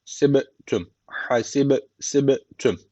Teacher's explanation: B harfi cezim almış burada kalkale tecvidi var burayı hafif bir vurguluyoruz